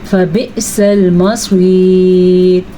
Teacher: حمزہ جھٹکے کے ساتھ ادا کیا جائے گا اور صاد کو پر پڑھیں گے